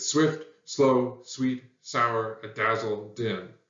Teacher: every syllable gets the heavy emphasis that's a spondy